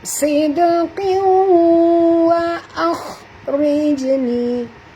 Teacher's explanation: jadi kita masukkan bunyi tanwin ke dalam waw disertai dengung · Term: idgham ma'al gunnah